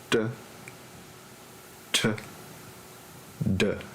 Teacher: one is voiceless and unaspirated, one is voiceless and aspirated, and the other is voiceless or voiced and unaspirated